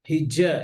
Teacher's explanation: أعوذ بالله من الشيطان الرجيم ثم قست قلوبكم من بعد ذلك فهي كالحجارة أو أشد قسوة আচ্ছা, এখানে একটু খেয়াল করেন, হিজ্জা, এই যে জিমে যেন, জিমটা যেন জিহ্বার আগা থেকে না হয়